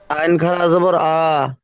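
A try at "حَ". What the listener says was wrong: ওটা আইন নয়, ওটা হা, হা খাড়া যাবার হা।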